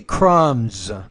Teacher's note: Now the S here, because it comes after a voiced consonant, should sound like a Z